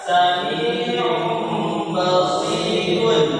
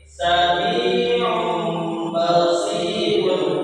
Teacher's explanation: Jadi kita ganti, kita tukar tadi yang tanwin itu yang ada bunyi bacaannya on berubah menjadi om · Hurufnya tidak berubah tapi suaranya berubah menjadi mim. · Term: suara mim